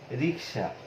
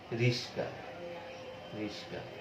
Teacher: এই যে আমাদের ক এবং স এরা কিন্তু পরস্পর স্থান পরিবর্তন করেছে, একটি জায়গায় আরেকটি এসে গেছে। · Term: ধ্বনির বিপর্যয়